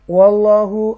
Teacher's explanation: اللہ کے نام سے پہلے زبر ہے تو لہذا یہاں پر اس کو تفخیم کے ساتھ اس لفظ کو ادا کریں گے